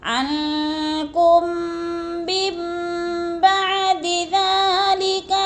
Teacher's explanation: میم کو میم کے ساتھ ملا کر پڑھنا ہے، درمیان والا نون ساکن نہیں پڑھا جائے گا۔ نون ساکن کے اوپر چھوٹا سا میم لکھا ہوا ہے، اس میم کو پڑھیں گے، جیسے عنکم من بعد ذلک لعلکم تشکرون۔